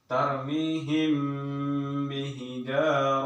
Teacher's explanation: Ikhfa Syafawi sama-sama dua bibir ditahan dia · Contohnya ini parmihim, mim mati bertemu dengan ba, itu ikhfa safawi, samar-samar dua bibir, agak ditahan dia